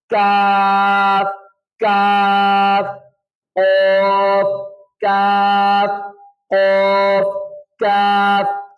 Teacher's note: تو اب کاف کو پڑھنے کا یہ طریقہ ہے کہ زبان کی جڑ تالو سے تھوڑا آگے سخت حصے پہ ٹچ ہو